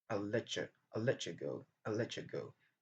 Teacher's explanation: Et également, nous avons l'assimilation, donc le fait que le son t et le son y se rencontrent, c'est qui va nous donner le son ch